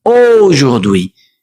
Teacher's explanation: La A y la U, repito, cuando la encontramos en francés, va a sonar siempre como una O